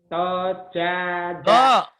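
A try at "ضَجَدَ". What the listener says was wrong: Do. Kalau to itu ada tangkainya ke atas. Ini do. Do. Do jada. Dojada. dojada. Dojada.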